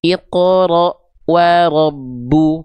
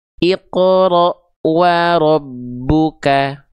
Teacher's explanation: cukup kita baca tekan saja, enggak perlu di qalqalahkan, enggak perlu dipantulkan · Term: idgam